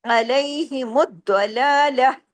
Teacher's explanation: جو گول تا ہے یہ ہاں میں بدل جائے گا جب ہم یہاں عارضی سکون کریں گے